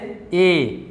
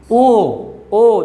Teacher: अर्ध संवृत क्या होता है, तो नाम से स्पष्ट है, क्या होता है अंग्रेजी में से हाफ क्लोज कहते हैं, ठीक है। तो जिन स्वरों के उच्चारण में मुख द्वार आधा बंद रहता है, आधा क्या रहे, बंद रहे, आधा बंद रहे, उसे हम क्या कहते हैं, अर्ध संवृत स्वर कहते हैं।